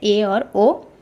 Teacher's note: जिन स्वरों के उच्चारण में मुख द्वार आधा बंद रहता है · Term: अर्ध संवृत